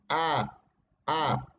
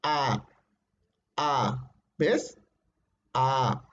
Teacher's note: Se ubica en el centro la lengua y es abierta porque tus labios, tu boca, tu cavidad vocal se agranda totalmente. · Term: central abierta